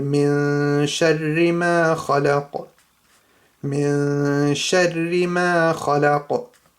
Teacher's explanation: It's the end of an ayah, so you just have a little echoing sound right at the end because it's a qaf. And Noon-saakin here, there's a sheen, so that's Ikhfa, so there's ghunna here.